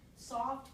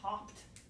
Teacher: Because both of those are alveolar, right? S is alveolar, voiceless alveolar fricative. T is a voiceless alveolar stop.